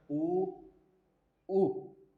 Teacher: ओष्ठ में छोटा ऊ और बड़ा ऊ, यह ओष्ठ में आते हैं